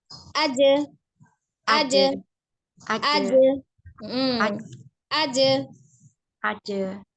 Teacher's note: huruf jim ini sendiri adalah bersifat al-jahru atau jelas ya, dibaca dengan jelas. Jadi pengucapannya dipantulkan.